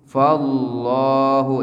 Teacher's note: Karena setiap lafaz Allah apabila sebelumnya huruf yang harakat fathah dhamma akan dibaca tebal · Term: tafkhim